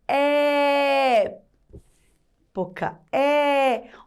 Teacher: o som ele fica mais forte, ele fica agudo, é um som aberto